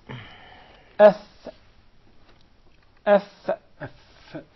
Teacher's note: The fa is articulated from between the inside of the lower lip and the tip or the edges of the two top front incisors.